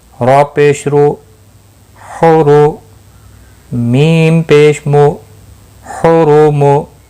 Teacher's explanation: را پور پڑا جائے گا پیش کی وجہ سے۔